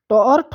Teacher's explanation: ट और ठ का उच्चारण भी मूर्धा से होता है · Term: मूर्धन्य